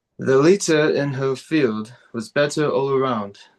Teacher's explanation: you need to connect the R in leader with the word in